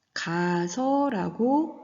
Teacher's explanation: 가다의 가와 어미 아서가 만났을 때 우리가 가서라고 발음하지요. 아 발음 두 개가 하나의 아 발음으로 합해지는 겁니다. 즉 하나의 아가 탈락되는 거죠. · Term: 동음 탈락